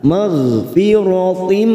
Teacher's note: huruf gha sukun hati-hati jangan memantul kita tahan